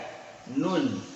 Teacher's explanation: Nun dari ujung lidah ketemu gusi ya